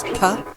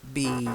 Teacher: B is softer, less air, and a more relaxed mouth.